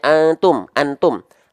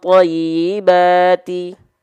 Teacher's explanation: samar dia masuk hidung tetap tapi masih masuk ke dalam rongga mulut sehingga terpecah ada yang masuk ke suara dengung rongga hidung ada yang masuk ke suara mulut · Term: ikhfa